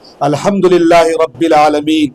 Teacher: را پر فتحہ ہے تو را کو پر پڑھیں گے. عالمین میں عین ہے، حروف حلقی ہے، وہ حلق سے نکلنا چاہیے